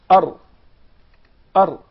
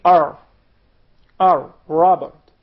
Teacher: But in Arabic, you gotta make sure that the tip of the tongue would hit the gum of the two top front incisors. Again, R, R, R. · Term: Arabic Ra